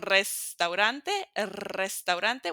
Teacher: And the last one, restaurante, restaurante. When it's at the beginning of the word, notice even if there's only one R, we're going to make it roll, so it's going to be a strong one.